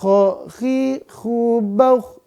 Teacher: gima makhrajnya nah k di mana makhratnya pemirsa k khi khu ya betul tenggorokan a atas tenggorokan atas makhrajnya ya maka dia enggak boleh bergeser ke bawah